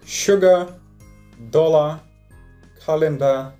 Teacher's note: то вместо звука A мы образуем шва